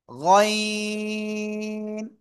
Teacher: গলার শেষ ভাগ থেকে উচ্চারণ করতে হবে